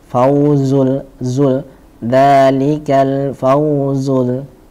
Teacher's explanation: Zainya diperjelas sifat sofirnya.